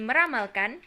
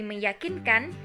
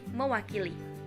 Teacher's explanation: Untuk yang ketiga yaitu proses hilangnya fonem. Proses hilangnya fonem n pada men dan pen terjadi sebagai akibat pertemuan morfem men dan pen dengan bentuk dasar yang berawal dengan morfem l, r, y, w, dan nasal.